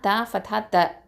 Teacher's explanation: த வந்து என்னது தரஃபுல் லிசான், நுனினாவை எழுத்து.